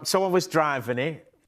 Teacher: where words end with a T, like in it, and also later in the word bit, you'll notice the T isn't pronounced, it's glottalized, so you'll hear I. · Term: glottal T